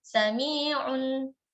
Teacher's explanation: Sami'un alim, tanwin berjumpa dengan ain, izhar tetap ada. Sami'un, tetap ada gunnahnya, hanya saja naqisah, tidak dipanjangkan